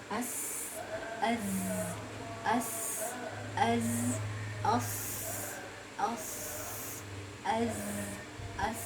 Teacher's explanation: Suara tambahan yang keluar dari dua bibir, atau bisa dikatakan seperti suara desiran burung. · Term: sofir